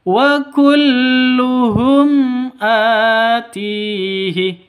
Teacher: a panjang dua ketukan karena ada tanda berdiri di atasnya